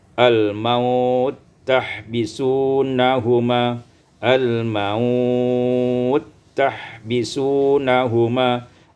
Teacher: al-mauti tahbisunahuma idgham ta fit ta, diidghamkan ta pada ta